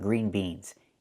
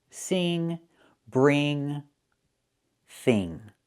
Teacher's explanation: When I say ing like sing, I'm using the long e sound like green beans. Eing. Sing.